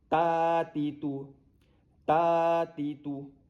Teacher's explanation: Ti dengan tu kekal pendek. Jangan dibaca panjang. Pendek bersambung. Ta saja yang panjang kerana ada alif di situ. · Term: mat asli